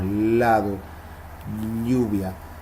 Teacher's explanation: hay otras que se llaman laterales la ele y la ll el aire sale por los lados